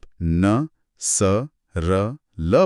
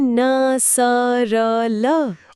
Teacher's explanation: वत्सर्य का मतलब है ऊपरी दांतों के ठीक पीछे वाला वो खुरदुरा हिस्सा या मसूड़ों का वह भाग जहां जीभ छूती है। हम जब आप न स र ल बोलते हैं तो ध्यान दीजिए कि आपकी जीभ की नोक ठीक उसी मसूड़े के हिस्से को छू रही होती है। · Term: वत्सर्य वर्ण